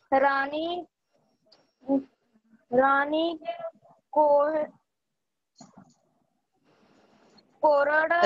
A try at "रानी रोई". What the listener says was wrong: रानी रोई। बेटा वो र है, आप क क्यों पढ़ रही हो? र है वो, र निवासों।